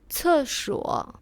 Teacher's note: Le C se prononce comme ts avec une forte expiration.